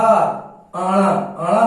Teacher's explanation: आणा नासिका भी है और मूर्धन्य भी है